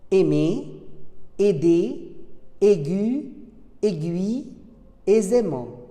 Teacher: AI se prononce et, le deuxième degré d'ouverture de la bouche